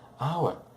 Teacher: Mas hour é uma das exceções, o H não é pronunciado. Observe que eu pronuncio somente o som vocálico.